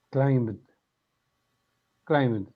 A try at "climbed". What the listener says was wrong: Good. Climbed, climbed, climbed. In this case, you don't pronounce the letter B.